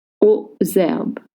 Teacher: link with the Z sound, and don't pronounce the S at the end